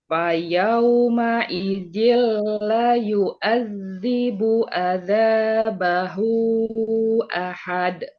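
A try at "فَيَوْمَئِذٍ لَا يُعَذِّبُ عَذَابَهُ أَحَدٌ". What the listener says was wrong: Ya, la-nya panjang. La yu'ad.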